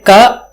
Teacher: there will not be any additional sound comes from the throat. It's a pure ka.